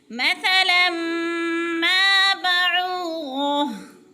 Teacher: مثا کی ثا کو نرم کر کے پڑھیں گے کیونکہ ثا نرم حروف میں سے ہے۔ ثا نرم حروف 3 ہیں، ثا، ذال، و۔